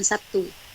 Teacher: mempengaruhinya umpamanya kata Sabtu dalam bahasa Indonesia lazim diucapkan Sabtu gimana terlihat bunyi B berubah menjadi P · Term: asimilasi, Asimilasi